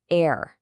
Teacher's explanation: Do you feel how your jaw drops a little more at the beginning? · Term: the air sound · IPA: /eə/